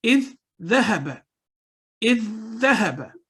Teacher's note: اسی طرح ذال کو ذال کے ساتھ ملائیں، اذ ذهب، اذ ذهب۔ تو آپ نے دیکھا کہ تشدید کی علامت ہے تو 2 سیکنڈ ہم نے اس کو لمبا کیا۔ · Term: ادغام المتماثلین